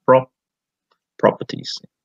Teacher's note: try to stress the first syllable